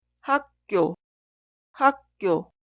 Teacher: La 기역 consonante inicial se pronuncia como 쌍기역.